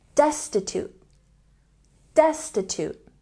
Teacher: your teeth wealthy wealthy and don't say very poor say Destin with a stress on the first syllable